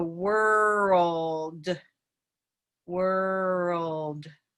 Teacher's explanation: it's what we consider a very vowel like l or dark l and it's back here and it sounds almost like a rose or an auburn oh